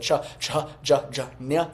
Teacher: Moving into the palatals, the cha, ja, nya sound, which is slightly above the gutturals in the mouth.